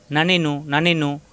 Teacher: নুন জিহ্বার আগা উপরে তালুতে লাগবে